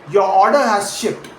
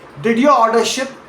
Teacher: Say your order has shipped as a plain statement and let your pitch drop naturally to the word ship falling down at the very end. Now say, did your order ship as a yes or no question and let your pitch climb upward on that final word, ship, rising at the very end.